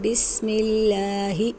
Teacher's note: لفظ اللہ کے لام سے پہلے زیر ہو تو لام باریک ہوگا